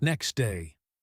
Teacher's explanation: The t is silent.